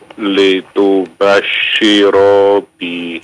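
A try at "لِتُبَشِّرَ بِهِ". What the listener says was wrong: Jangan dipanjangkan ro-nya ya. Fa innama yassarnahu bilisanika litubashshira bih.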